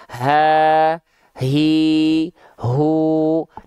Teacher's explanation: Hak besar itu dilafalkan dari tsumma li aqsal halqi hamzun ha'u. Hak besar itu dilafalkan dari pangkal tenggorokan kita, tenggorokan paling bawah kita, tenggorokan paling dalam kita.